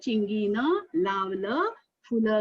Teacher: उस अंतिम अक्षर पर थोड़ा जोर देना, थोड़ा अधिक समय तक बोलना